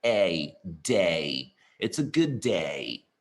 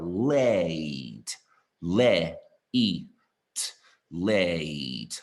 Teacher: 实际上是两个元音来的嘛，前半就是▁A，▁后半就是▁E